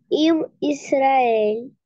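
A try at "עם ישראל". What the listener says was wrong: Ама, посмотри, какая тут огласовка, черточка, правда? Черточка, она дает нам звук А. Ам Израиль.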